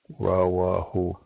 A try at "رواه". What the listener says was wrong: No, not warahu. Rawahu. Yeah, you're putting a wow. Even if you're saying it right, you're still putting a wow sound in the wa, in the ra, and a ra sound in the wow.